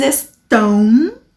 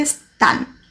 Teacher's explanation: E eles estão em português, né, que tem esse som nasalizado. Em espanhol não tem o som nasalizado, então fica están, tá?